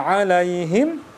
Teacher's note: mimnya adalah dia tawasut atau kita matikan dan ada aliran suara